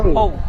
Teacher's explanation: এই দুই নোক্তাওয়ালা কপটি মুখ গোল করে পড়তে হবে, একে পুর করে পড়া বলে। তাহলে এই কপটি মুখ গোল করে পুর করে পড়বেন।